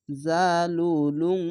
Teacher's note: ইকফাগুন্নাটা কিরকম হবে অনেস্কারের মত বাংলা অনেস্কারের মত গুনগুন করে পড়তে হবে